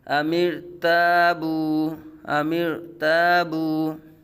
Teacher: را ساکن سے پہلے زیر اصلی دوسرے کلمے میں را کو پور پڑا جائے گا